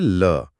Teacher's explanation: इसे बोलते समय जीभ मुंह के बीचों-बीच एक खंभे की तरह खड़ी हो जाती है और हवा उसके दोनों साइड से यानी बगल से निकल जाती है। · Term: पार्श्विक